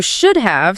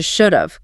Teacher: they reduce the word have so much that it loses the H and the A. It just becomes a tiny, barely there A sound attached directly to the end of the first word. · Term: elision